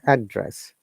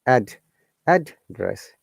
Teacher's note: It is noun. So when you're stressing on the first part of this word, address, it sounds like your tone is coming from upper intonation to down intonation or higher intonation to falling intonation, we call.